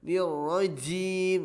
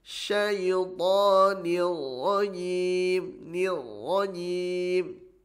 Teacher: Kemudian huruf jim tidak hamas, tidak ada ceplak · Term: tidak ceplak